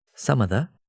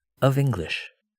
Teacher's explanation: First without the [v] sound in some of the ... some of the and then with the [v] in of English ... of English.